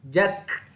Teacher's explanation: pangkal lidah dia sentuh lelangi atas, kaf dia depan sikit daripada qaf. Mudah bicara, kaf nipis sahaja. · Bila mana kaf mati, dia ada sedikit angin keluar. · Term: huruf kaf